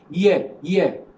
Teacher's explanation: Palatal and palatal, we have the only sound which is palatal is ye. Here, the front of the tongue is raised, coming close, not very close, close to the hard palate.